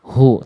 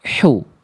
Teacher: Tegaskan lagi H kecil. Karakter nafasnya berbisik lembut dilafalkan dari bagian tengah tenggorokan.